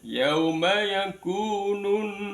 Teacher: al-nya tidak terbaca masuk ke dalam tasidnya nun. Kalau ada ee bahasan tentang alrif, kalau al-nya tidak terbaca kemudian masuk dalam tasdid huruf di depannya al, maka dipastikan hukum bacaannya bernama idgham syamsiyah.